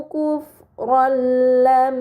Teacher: terdapat harokat fathahtain bertemu dengan huruf lam, ini dinamakan idgham bila gunnah, maka fathahtain dibaca secara melebur tanpa gunnah yang dipanjangkan